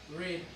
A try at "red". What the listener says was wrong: No, no, no. Now, now you're saying it in American English. Don't even try.